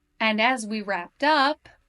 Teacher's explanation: We somehow made it through the whole agenda, and as we wrapped up, there's a new idea being introduced, so my intonation goes up.